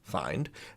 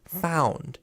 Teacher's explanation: So in the present tense, it's find, and in the past and past perfect, it's found. It goes from I to ow. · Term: vowel shift